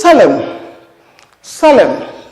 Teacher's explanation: It is not pronounced. So that word ends in this bilabial nasal